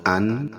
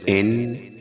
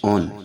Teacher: تنوین جب ادا کرتے ہیں تو اس کے آخر میں ہلکی نون کی آواز پیدا ہوتی ہے، جیسے حمزہ 2 زبر ان، حمزہ 2 زیر ان، حمزہ 2 پیش اون۔